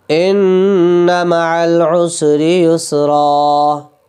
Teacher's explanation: نون پہ تشدید ہے، غنہ کریں گے